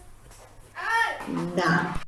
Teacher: So the tip of the tongue, rising and nearly touch the alveolar ridge. Nếu mà âm M mình sử dụng âm hai môi thì âm N sẽ là the tip of the tongue là đầu lưỡi chạm lên nuốt ha, sẽ có là N.